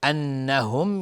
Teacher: نون مشدد 2 حرکت غنه میدیم